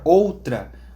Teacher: na palavra outra, o O também é mais forte nessa sílaba, e a vogal U é mais fraca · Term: semivogal